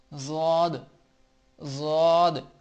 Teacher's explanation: زبان کی کروٹ جب اوپر کی داڑوں سے لگے یعنی بائیں طرف والی، جو بائیں طرف والی لیفٹ سائیڈ والی جو داڑیں ہیں ان سے لگے تو ضاد ادا ہوتا ہے۔